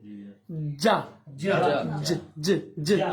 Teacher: اچھا دیکھیں اس کی آواز کیسے جیم کی آئے گی؟ حلق زبان کے درمیان اور تالو کے درمیان سے